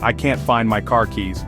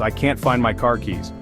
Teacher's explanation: sounds flatter while the British version is longer and in car the American R is pronounced strongly whereas British speakers often soften or drop it all together · the a in can't is longer and the r and car is softer or sometimes entirely dropped